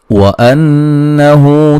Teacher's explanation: वाव को अदा करते हुए दोनों होंठों को गोल करते हुए ना तमाम मिलने से वाव अदा होगी